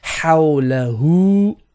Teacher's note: Now be careful here, you have 2 types of ha, which we haven't covered. So we have the first ha, which is a middle throat, and the next ha is the bottom throat